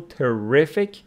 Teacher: So stress of terrific falls on the second syllable